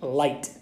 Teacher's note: call that in English a light L and that's for example when you say the word light you have that L that's at the front of your mouth